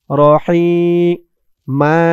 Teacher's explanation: হার আওয়াজটা গলার ভিতর থেকে চিকুন হয়ে আসবে